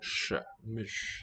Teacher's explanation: With the voiceless retroflex. Fricative there.